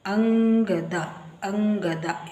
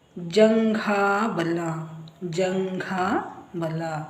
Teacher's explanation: ಅನುಸ್ವಾರದ ನಂತರ ಕ ಖ ಗ ಘ ಅಕ್ಷರಗಳು ಇದ್ದಾಗ ಅನುಸ್ವಾರದ ಉಚ್ಚಾರ ಞ ಆಗುತ್ತದೆ